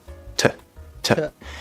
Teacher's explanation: you hear that's nice and crisp, and we hear that air